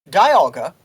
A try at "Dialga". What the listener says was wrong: The official pronunciation is Dialga. You'd think it is Dialga because, like, a time dial and diamond, but no, it's Dialga.